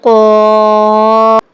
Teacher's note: پہلا قاف ہے وہ حروف مستعلیہ میں سے ہے، اس لیے ہم نے اس کو پر یعنی موٹا پڑھا ہے. آپ نے پڑھا ہے نا کہ یہ ہر حالت میں پر اور موٹا پڑھا جائے گا.